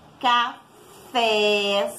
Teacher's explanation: Café, sempre de trás para frente, tá? Então, aqui a sílaba tônica é a última, o fé